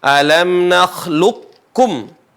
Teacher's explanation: k enggak dibaca Qalqalah alam nakluqum bukan tapi idgam alam naklukum seolah-olah Q tidak dibaca tapi yang bertasdid adalah huruf Kaf